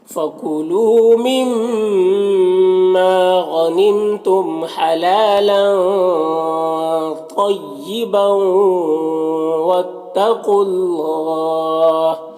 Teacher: اور اللہ کے لام کو پر پڑھیں گے کیونکہ قاف کے اوپر پیش ہے · حلالا لام کے اوپر کھڑا زبر ایک الف کے برابر کھینچیں گے اور یہ لام کی میں جو تنوین ہے اس میں اخفا ہو رہا ہے، تنوین کی آواز کو ناک میں چھپا کر پڑھیں گے